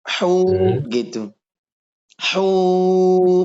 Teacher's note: Jadi panjang karena huruf mat wawu ini keluarnya dari rongga mulut.